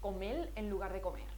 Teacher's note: el lambdacismo existe en la parte oriental de Andalucía